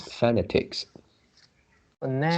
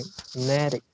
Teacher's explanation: So the stress is at the second syllable.